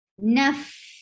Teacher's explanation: On fa, you make sure you give hums. Hums is a flow of breath